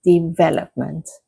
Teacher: The correct stress is on the second syllable. So, it is development.